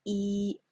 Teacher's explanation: just the flat tone, the first tone, yi. Okay, and here are some challenges.